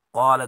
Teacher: قال کو قاف کو پر پڑھیں گے